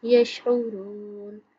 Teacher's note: عین کی آواز حلق سے نکالیں گے